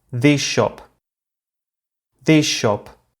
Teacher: whereas the first sh is retained the second sh is released so they sound as if they were one long sh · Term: regressive assimilation